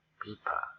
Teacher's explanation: people ordinary pronunciation without pushing the air